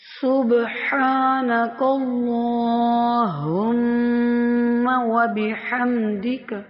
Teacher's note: یہاں پہ باریک سیٹی والا سین ادا کریں گے